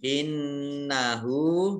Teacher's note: nun tasdid dibaca gunnah ditekan 2 harokat mendengung